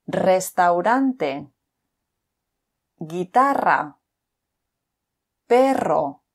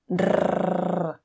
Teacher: This is an interesting letter because in general it's pronounced as normal, but at the beginning of the word or when it's a double R, you need to roll your tongue